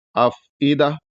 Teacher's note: غلط ہے، تو اس کو صاف صاف پڑھنا ہے، افئدہ، یعنی جب فا کے ساکن کو ادا کریں گے تو ہلکی سی ہوا منہ سے نکلے گی